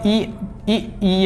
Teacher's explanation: इनके उच्चारण में हमारे जीभ की तालु का प्रयोग होता है। क्या कहलाएंगे, हमारे तालव्य वर्ड कहलाएंगे।